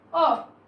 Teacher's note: मध्य स्वर अर्थात जिसको बोलने में हमारी जो जीभ है मध्य से अर्थात बीच में से सक्रिय रहती है उसको मध्य स्वर कहा गया है और ये केवल एक है अ।